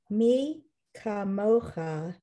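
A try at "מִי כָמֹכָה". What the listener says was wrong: So just be careful with the chaf, right? There's no dot in it. So it's not a ch, that's all.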